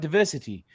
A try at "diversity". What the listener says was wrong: If you're gonna be British, you can't pronounce your T's. It's diversity. Diversity.